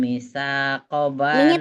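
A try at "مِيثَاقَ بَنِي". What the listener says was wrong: panjang.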